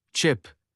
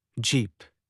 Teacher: post-alveolar or palato-alveolar. Produced just behind the alveolar ridge